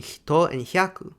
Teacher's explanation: Fa became ha, except in the syllable fu, and later palatalized ha became hi, as in hito and hyaku